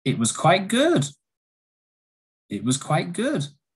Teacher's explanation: it was a rising intonation and it shows surprise